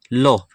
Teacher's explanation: तो पार्श्विक होता है लो। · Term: पार्श्विक व्यंजन